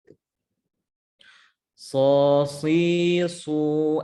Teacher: huruf shad dengan huruf sin hanya berbeda sifat, yaitu huruf shad mempunyai sifat yang tebal